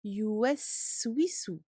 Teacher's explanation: Vous entendez le sin sakin et son temps de rakhawa. Il faut vraiment lui donner ce temps d'écoulement du son et ne pas passer trop vite.